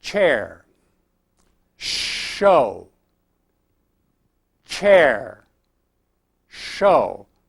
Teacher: as I start to form the initial sounds in those words, my lips become rounded and pushed forward